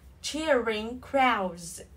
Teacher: Âm d sẽ là trở thành cái stop sound, okay? Nó sẽ không được bật ra.